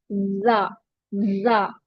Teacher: जा में buzzing sound आता है